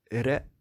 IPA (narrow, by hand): ɾ